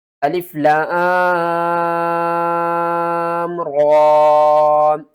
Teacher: را کے اوپر جب بھی زبر آ جائے تو را کو ہم موٹا پڑھتے ہیں، یہاں پر کھڑا زبر ہے تو پھر بھی ہم را کو موٹا کر کے پڑھیں گے۔